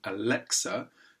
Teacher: A falling intonation at the end of the utterance, often with a stress on the middle syllable, Alexa, corresponded with moments where something was already happening.